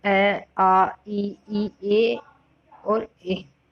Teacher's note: अवर्ताकार स्वर, इन स्वरों के उच्चारण में होठ गोल नहीं होते